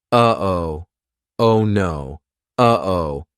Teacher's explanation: that uh oh is a perfect example of how to use the glottal stop